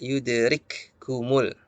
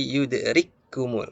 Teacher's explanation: Indonesia tegas sukun jangan kita baca you derik khumul tapi yudrikkumul masuk ke huruf Kaf berikutnya jadi halusnya pada huruf Kaf itu menghilang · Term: idgham